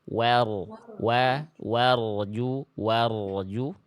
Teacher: dari warju ro sukunnya tadi kurang tebal ya ro sukun kalau sebelumnya fathah angkat pangkat lidah lebih tebal lagi